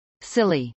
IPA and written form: sˈɪli (silly)